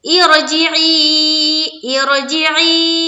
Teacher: کیونکہ یہاں دیکھیے یا ساکن سے پہلے زیر ہے یا مدہ ہے اور اس کے اوپر مد ہے، تو 4 سے 5 الف کے بعد قدر کھینچنا ہے اور را کو پر رکھنا ہے، یہاں زیر ڈالنی ہے.